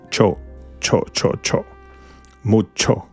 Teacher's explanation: It's almost like a show, but you have to put your tongue a little bit up, close to the palate, and press it.